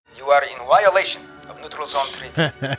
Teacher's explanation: He pronounces the V's as W's and the W's as V's.